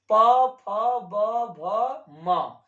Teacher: प वर्ग का उच्चारण स्थान किससे होता है दोस्तों ओठ से होता है